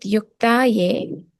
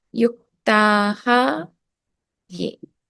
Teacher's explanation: If there's an a followed by a ya, which is a soft consonant, then the visarga drops.